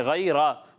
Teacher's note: لیکن بیٹا را پر زبر ہے، غیرہ، تو را کو پر کر کے پڑھیں